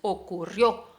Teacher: La sílaba fuerte ahí es la O final